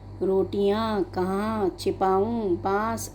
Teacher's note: इन शब्दों का उच्चारण नाक व मुंह दोनों से किया जाता है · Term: अनुनासिक शब्द